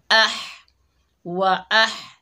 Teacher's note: हा को हलक के दरमियान से अदा करेंगे